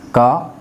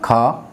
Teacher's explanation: का उच्चारण करने में कम वायु, जबकि खा का उच्चारण करने में अधिक वायु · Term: अल्पप्राण